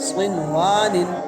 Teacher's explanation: صن کے نون پر غنہ نہیں ہوگا کیونکہ نون ساکن کے بعد واو آیا ہے، واو میں الف مد ہے۔